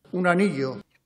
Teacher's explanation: El Rey pronuncia la doble L de anillo con fricción. Quizás tú pronunciarías aneo, con un sonido muy suave.